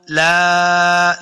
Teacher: لام زبر الف لا, الف مدہ ہے, اس کو 2 حرکات لمبا کریں گے.